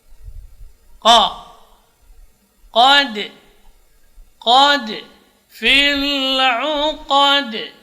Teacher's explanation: huruf qaf juga tidak boleh lepas udaranya